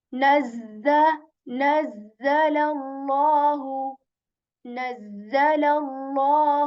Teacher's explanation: The upper and the lower teeth they come closer, and you say this buzzing sound and you say the, right?